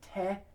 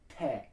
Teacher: tongue pressed up against the back of the upper teeth for te and de